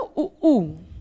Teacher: उ उ ये ओष्ठ से उच्चारित होते हैं बच्चे ओठों से ओष्ठ से उच्चारित होते हैं तो इनको ओष्ठ स्वर कहते हैं